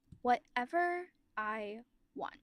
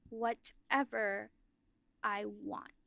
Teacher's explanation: So instead of du du du duh, it's now duh duh duh duh, you've separated it into two syllable sections instead of four separate syllables. And what that does is it changes our emphasis and the type of villain.